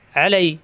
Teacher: লাই জবরের বামে ইয়া সাকিন, লিনের হরফ কোনো টান নেই